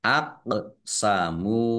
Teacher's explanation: Aqsamu qaf sukun bacaan qalqalah. Dibaca memantul, ditampakkan pantulannya.